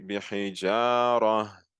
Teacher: So instead of me saying here bihijara, I'm going to open my mouth with the jim, and I'm going to say bihijara. So I'm elongating the jim to haraka. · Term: natural mad